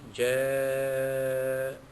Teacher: Idza man asli, za ibtada ma asli, jaa, itu mad wajib muttasil, wajib dibaca sepanjang pada kadar panjang 6 harakat